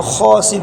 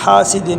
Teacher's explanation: باریک والا ہا ہے، اس کو گلے کے شروع سے ادا کریں گے